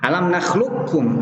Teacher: dihilangkan qafnya, diidghamkan langsung ke kaf